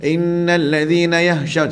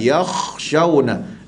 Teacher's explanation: Isti'la di sini kedudukan kha tu tebal.